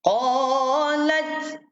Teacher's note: Jangan sampai keluar lidah huruf ta ni. Nanti jadi qalat. Tak keluar lidah. Hujung lidah letak belakang di atas ni. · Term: huruf ta mati